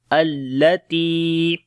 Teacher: تا کو لمبا کریں گے، یا مدہ ہے